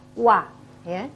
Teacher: Jadi saat kita mempraktekkan huruf wa, bahwasanya kalau kita mengucapkan wa itu tidak saling bertemu. Jadi bibirnya ini mengumpul tetapi tidak saling merapat.